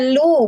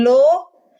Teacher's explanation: Lam domah bunyinya lu bukan lo.